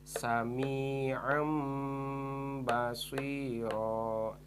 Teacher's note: tanwin patahnya berubah jadi huruf mim makanya di dalam Alquran itu suka ada Meme kecil naik ini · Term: hukum iqlab